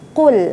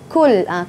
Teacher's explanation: makhrajnya huruf qaf ya, makhrajnya di pangkal lidah qa ya, jangan kul jadi kaf.